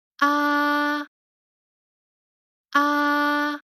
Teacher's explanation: the first tone is high and flat ah ah make sure the peach is flat it doesn't rise · Make sure the pitch is flat. It doesn't rise or fall during the entire tone duration.